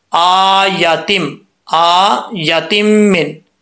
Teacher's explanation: पहले लफ्ज के अंदर जो आया तिन है यहां पर सिर्फ हमजा को लंबा करना है या को लंबा नहीं करना